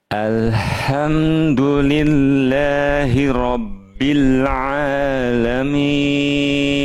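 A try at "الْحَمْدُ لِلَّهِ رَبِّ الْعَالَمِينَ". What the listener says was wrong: Paling di sini aja tadi ya. Jangan terlalu boros. hak kecilnya. Jadi tapi nggak apa-apa karena mungkin belum terbiasa jadinya terlalu over berlebihan. Jadi berlebihan tuh capek. Capek nanti nafasnya terlalu kebuang banyak.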